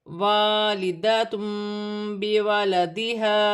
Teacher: دو پیش کی تنوین کے بعد با آ رہی ہے، یہاں چھوٹی سی میم لکھی ہوئی ہے، تنوین کی آواز کو میم سے بدل کر غنے کے ساتھ ادا کیا جائے گا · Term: اقلاب